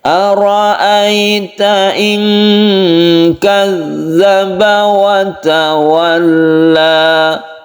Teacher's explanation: Tasydid zalnya ini hati-hati tekankan atau ditekan ya ke huruf zalnya.